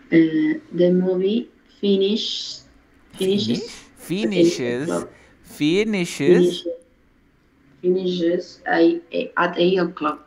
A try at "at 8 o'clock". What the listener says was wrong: At 8 o'clock. Yo sé que está perfecto at 8 o'clock. Pero ¿cómo tendrías que acostumbrarte? Aquí también hay otra T, mira. 8 o'clock.